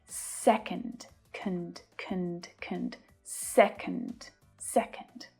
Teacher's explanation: the stress is on the first syllable, se, and the second one is unstressed. So the vowel sound reduces down.